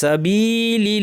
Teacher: এই লামটা পাতলা হবে কারণ আগের জের।